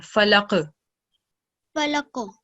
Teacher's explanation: when there is letter qaf with a sukoon, we produce a jerking sound. So when we're pausing over here, we're going to produce a jerking sound.